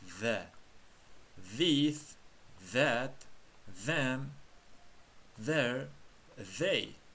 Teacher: Z harfini old tishimizga tilimizni tekkizgan holatda the talaffuz qilamiz.